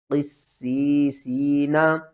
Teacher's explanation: یہاں پر دیکھیں تو سین کے اوپر تشدید بھی ہے اور آگے یا ساکن سے پہلے زیر ہے، حروف مدہ ہے، پھر بھی حروف مدہ ہے، 2 حروف مدہ آ رہے ہیں اور 3 سین آ رہی ہیں. تو قاف کو آپ نے موٹا کر کے سین کے ساتھ ملانا ہے. قاف سین زیر قس، سین یا زیر سی، قسی، سین یا زیر سی، قسی سی، نون زبرنا، قسی سینا.